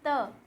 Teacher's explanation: हमारी जीवा जो है ऊपर के दांतों को टच कर रही है ना हमारे दातो को टच कर रही है तो क्या दंत